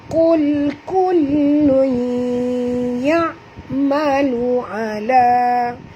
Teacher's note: kena masukkan bunyi tanwin ini ke dalam ya disertai dengong, ya. Dengong berharakat.